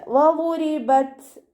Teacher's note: റ കെസ്റയാണ്, താഴ്ത്തി ഉച്ചരിച്ച് കൊടുക്കുക കേട്ടോ. ത സുക്കൂനാവുമ്പോൾ കുറച്ച് എയർ പുറത്തോട്ട് പോകണ സൗണ്ട് കൊടുത്തിട്ട് ഉച്ചരിക്കുക.